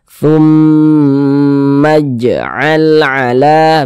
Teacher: Maka ini kita gunnahkan, kita panjangkan. Thum, di bagian thumnya itu kita tahan, kita panjangkan sejenak, kita gunnahkan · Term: gunnah musyaddadah